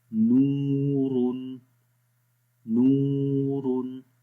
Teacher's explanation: یہ جو ہونٹ گول ہو رہے ہیں یہ پیش کی وجہ سے ہونٹ گول ہو رہے ہیں کیونکہ یہ واو مدہ ہے، ٹھیک ہے، اور ہم پڑھ رہے ہیں واو غیر مدہ۔